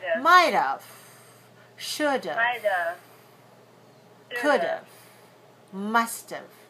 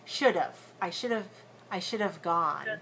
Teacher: the auxiliary have is usually contracted so that it sounds like of. Not have, but of.